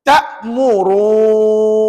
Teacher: jadi tadi enam harakat ru lepas tu bunyi an dua harakat